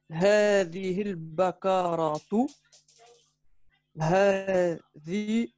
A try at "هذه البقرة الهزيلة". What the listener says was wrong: Tu as fait une longue pause après le Bakharatu. Donc, tu aurais dû reprendre al-hazila.